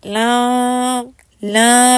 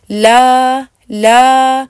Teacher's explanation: अगर यह आवाज आपकी मुकम्मल तौर पर नाक से नहीं निकल रही तो आपकी बिल्कुल प्योर मुंह से आवाज निकलेगी बगैर गुन्ना के